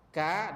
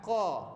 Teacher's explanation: Ka pangkal lidah di atas, qa pangkal lidah di bawah. Kalau silap letak pangkal lidah ke atas, dia jadi kaf.